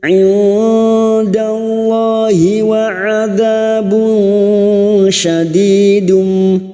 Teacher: Ikfa hakiki. Duma tanwin dibaca samar dan mendengung selama 3 harokat.